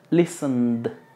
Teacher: Lis, esta es muda. La T y la E son completamente mudas y solamente se pronuncia la N.